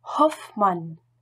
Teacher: Le H est fortement aspiré en position initiale ou au début de syllabe.